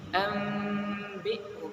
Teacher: nun seharusnya dibaca nun an, ya, an. Tapi karena dia bertemu dengan ba, maka dirubah menjadi mim. Ambihum, dengan memperhatikan gunnahnya. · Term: iqlab